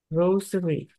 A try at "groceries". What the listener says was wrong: S. Để ý cho cô có S hay không S nha. Groceries. Groceries.